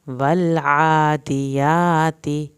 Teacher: لام کو نہیں ہلائیں گے، عین کو حلق سے ادا کریں گے اور کھڑی زبر کو کھینچنا ہے